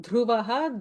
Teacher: dhruva is a mahaprana dha